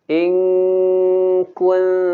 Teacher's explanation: Kalimat kuntum seharusnya dibaca tipis, tidak tebal.